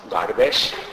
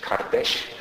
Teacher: in Eastern Turkish it's pronounced Gardesh, in Western Turkish Kardesh